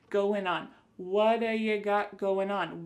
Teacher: we're going to drop that G at the end of the word going.